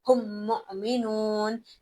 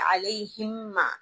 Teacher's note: ہم الگ پھر مؤمنون الگ نہیں پڑھیں گے، ایک ساتھ ہی پڑھیں گے